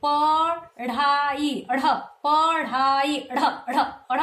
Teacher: अढ़ के बोलने में हमारा जीभ जो है बाहर को हवा देके जल्दी से बाहर निकलता है, जीभ को लुढ़काते हुए